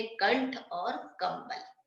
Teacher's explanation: अन की मात्रा जब किसी भी व्यंजन पे लग जाती है तो कैसी ध्वनि आती है? न की ध्वनि आती है।